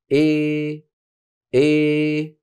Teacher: ومن القبائل العربيه من كان يرفع وسط لسانه اكثر فيؤدي الى صوت مزيج من الالف والياء بنسبه واحده الاول كانت الغلبه فيه للالف الامال الصغرى اما هذا فهو 50% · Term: الاماله الكبرى